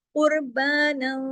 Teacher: आवाज थोड़ी नाक में गई, थोड़ा गुन्ना हुआ, थोड़ी बाहर रही